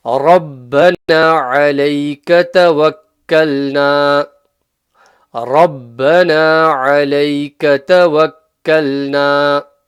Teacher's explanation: The alayka, ayn from the middle of the throat.